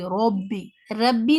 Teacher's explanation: آپ کی زبان گول ہو جائے گی اور ساؤنڈ آپ کی ہیوی ہو جائے گی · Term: heavy sound